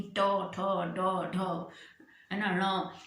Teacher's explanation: जीभ जो है मुंह के अंदर, ऊपर के दांत के पीछे की जो जगह है वो है मूर्धा, उसको छूती हुई जो है वायु निकल जाती है, जीभ उधर को उनको स्पर्श करती है, और उस तरह से जो है इन वर्णों का उच्चारण होता है।